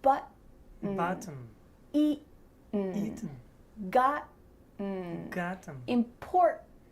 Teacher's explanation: Do you notice that my throat is stopping that T sound in the middle of the word? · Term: glottal T